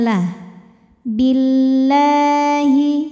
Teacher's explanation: kita panjangkan dua harakat saja Wal mukminuna Billahi lam pada lafaz Allah atau lam jalalah dibunyikan secara tarqik sebab huruf sebelumnya berbaris kasrah maka di bacanya tipis